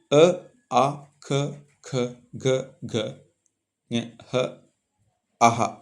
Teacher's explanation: ಇವು ಕಂಠ ಭಾಗದಲ್ಲಿ ಹುಟ್ಟುವುದರಿಂದ ಇವುಗಳನ್ನ ಕಂಠ್ಯ ವರ್ಣಗಳು ಎಂದು ಕರೆಯುತ್ತೇವೆ